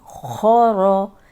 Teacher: खो ज़बर खो, रॉ ज़बर रॉ, खो रॉ। खो मोटा है, रॉ भी मोटी, रॉ पे ज़बर है इसलिए मोटी है।